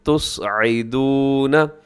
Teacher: یہاں حرف صاد ہے جو کہ موٹا پڑھا جائے گا، باقی سب حروف اس لفظ کے اندر باریک پڑھے جائیں گے۔